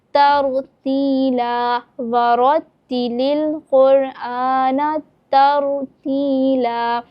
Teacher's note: تو یہ جو تر ہے، تا رو زبر تر، آپ یہاں پر دیکھیں رو ساکن ہے، اور رو ساکن سے پہلے کیا ہے؟ زبر۔ تو رو اس صورت میں بھی موٹا کر کے پڑھا جائے گا، تو اس کو ہم یہاں ترتیلا نہیں پڑھیں گے بلکہ ہم پر یعنی موٹا کر کے پڑھیں گے، ترتیلا، وَرَتِّلِ الْقُرْآنَ ترتیلا۔